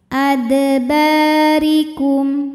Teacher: ada Alif didahului fathah maka huruf ba panjang dua harakat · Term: Mad Thobi'i dahohiri